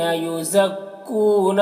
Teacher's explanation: واو مدہ ہے، ایک الف کے برابر کھینچیں گے